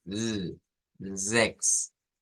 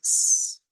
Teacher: Y que debemos de distinguir que no es lo mismo, porque normalmente a nosotros se nos ha acostumbrado a hacer la Z igual que la S, pero aún en la transliteración debemos tomar en cuenta que no es el mismo sonido. El sonido Z es un sonido vibrante, es Z, zex. El otro es S, es como sopladito.